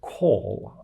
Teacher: the l at call is a bit, darker, sounds a bit like the O is still continuing actually. And this sound does not exist in German. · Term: dark L